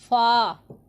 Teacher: इसे हरूफ शफ़विया का नाम दिया गया है। ऊपर के दांतों के किनारे और निचले होंठ के तर हिस्सा से अदा होता है